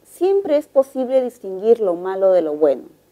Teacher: como observamos el tono es descendente · el tono es descendente y puede pasar a hacer una pregunta